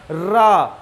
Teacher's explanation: जब रा बोलते हैं तो अंदर से वायु आती है और जीभ में टकराती है तो जीभ में कंपन होता है। इसे लुंठित शब्द भी कहा जाता है।